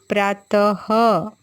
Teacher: जब हम यह की मात्रा लगाते हैं बच्चों तो उसका उच्चारण ह की तरह होता है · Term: विसर्ग